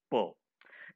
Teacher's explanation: I have mentioned here bilabial, B-I-L-A-B-I-A-L, bilabial, and plosive. Voiceless, bilabial, plosive consonant sounds · In which manner the air is released? It is released with the explosion. That's why it is called as plosive.